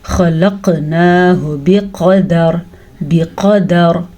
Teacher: قاف ہم نے موٹا پڑھ لیا کیونکہ حروف مستعلیہ میں سے ہے. را کو بھی ہم نے موٹا پڑھا ہے کیونکہ وقف کی وجہ سے را ساکن ہو گئی. ساکن را سے پہلے زبر آ گئی تو را پر پڑی جائے گی.